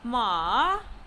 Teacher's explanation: It is said with the falling tone, also known as the fourth tone